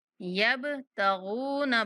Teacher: با پر کلکلا کریں گے اور غائن کو پر پڑھتے ہوئے واو مدہ کی وجہ سے کھینچیں گے